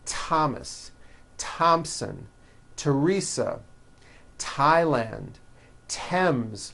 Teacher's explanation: Although these next words and names are spelled with a TH, they are pronounced as if they were spelled with a normal T